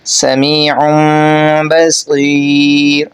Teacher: آپ نے نون کی جگہ پر میم کو غنہ اور اخفا کے ساتھ ادا کرنا ہے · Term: اقلاب